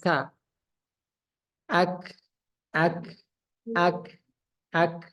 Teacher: ka ka bisa dirasakan napasnya keluar